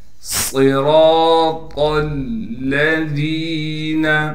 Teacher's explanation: ذال کے بعد یا مدہ ہونے کی وجہ سے ذال کو ایک الف کی مقدار کھینچیں گے اور ذال کو باریک کر کے پڑھیں گے